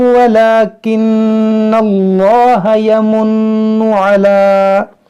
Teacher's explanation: جلال سے پہلے زبر ہے تو اس کو موٹا پڑھیں گے